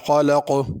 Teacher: خلق میں خا کو بھی پر کرنا ہے، قاف کو بھی پر کرنا ہے، خلق نہیں پڑھنا۔